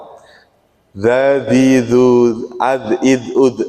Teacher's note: enggak boleh dimantulkan kalau dza bukan qalqalah